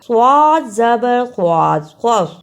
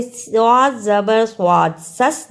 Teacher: صاد کی جگہ پہ سین کی آواز نہیں آنی چاہیے